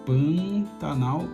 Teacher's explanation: Aí a sequência é uma letra A, só que reparam que essa letra A ela já é meio anasalada, né? Pantanal, e essa nasalização acontece por conta de um N que vem antes de um T